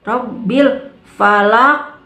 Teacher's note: Falak harus terasa, pantulannya harus terasa, harus si qaf itu kembali lagi terasa di tenggorokan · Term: qalqalah kubra